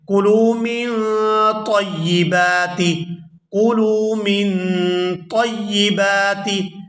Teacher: یہاں نون ساکن ہے اور اس کے بعد حروف اخفاء میں سے طا یہاں پر موجود ہے، تو یہاں نون ساکن پر ہم اخفاء کریں گے اور آواز جو ہے ناک سے ادا ہوگی